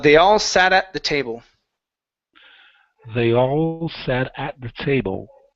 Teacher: so we have a flap T into a stop T. Okay, and then give me a good L at the end of the word table.